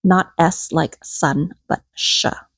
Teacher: In Southern Vietnamese, S makes a sh sound, like show. Not S like sun, but sha, like show.